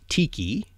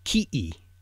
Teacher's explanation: So that T becomes a K and the K becomes a glottal stop.